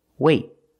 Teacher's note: I don't release the T it's a stop T I stop the air I stop the air with my tongue in the T position